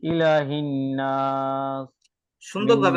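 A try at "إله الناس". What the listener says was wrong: সুন্দরভাবে গুণাগুলো হচ্ছে না। ধরে রাখার জায়গাগুলো একটু বেশি বেশি করতে হবে।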